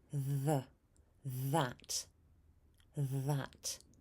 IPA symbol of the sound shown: ð